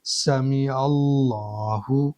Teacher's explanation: عین کے اوپر زبر ہے تو لفظ اللہ کے اس والے لام کو موٹا کر کے پڑھیں گے